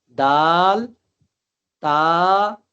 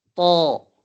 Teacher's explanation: خیال کرنا ہے جب زبان کی نوک کو ہم نے ثنایا علیہ کی جڑ کے ساتھ لگانا ہے تو زبان دائیں اور بائیں طرف سے تھوڑا سا اس کو سمیٹنا ہے، اور سمیٹ کر ثنایا علیہ کی جڑ کے ساتھ زبان کی نوک کو لگائیں گے تو طا مخرج یہی رہے گا، البتہ یہ پر پڑھا جائے گا